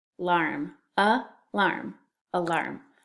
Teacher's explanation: the first syllable is uh and the second syllable is our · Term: schwa